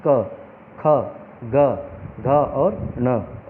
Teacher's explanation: जो क वर्ग है, ये कंठ्य व्यंजन है, ये गले से बोले जाते हैं, जैसे कि क, ख, ग, घ और न। इन व्यंजनों को बोलते समय जीभ का पिछला हिस्सा गले में लगता है।